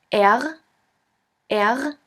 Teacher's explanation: you have to gargle in the back of your throat until it starts to vibrate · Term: the German R